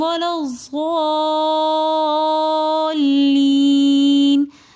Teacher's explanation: یا مدہ کا قاعدہ ہو رہا ہے تو ضالین کو تھوڑا سا ہم کھینچ کر پڑھیں گے